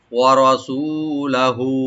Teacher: ওয়া ওপেন রাখবেন, রা এখানে ডিপ করে পড়বেন, সু একালিপ টানবেন, লামটাকে ওপেন করে হাটাকে একালিপ টানবো আমরা।